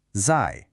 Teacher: This one has a fourth tone. So, it's a sharp falling sound.